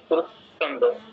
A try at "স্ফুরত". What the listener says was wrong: না, ফুরত নয়, স্ফুরত, স্ফুরত, স্ফুরত। এটা তো না, ফুরত নয়, মানে এটা তো দন্তস হসন্ত না, তো হসন্তযুক্ত অক্ষর তো আপনি আলাদা করে উচ্চারণ করতে পারবেন না, এটা আনতে হবে, মানে জিহ্বাটা ওই জায়গায় স্পর্শ করাতে হবে, দন্তে স্পর্শ করে তারপর ফতে যেতে হবে। স্ফু, স্ফু, ফু নয়, স্ফু।